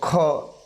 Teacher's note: તો મહાપ્રાણ મૂળાક્ષરનો આપણે જે મૂળાક્ષર બોલતા વધારે ખેંચવો પડે છે તો ખ, તો આપણા જે સ્વરપેટી છે ત્યાં થડકાર અનુભવાય છે। મહાપ્રાણ એટલે કે વધારે લાંબો ખેંચવો પડે છે, વધારે લાંબા શ્વાસથી બોલવો પડે છે, એ મહાપ્રાણ તરીકે ઓળખાય છે, એટલે કે એ જવાબ આવશે।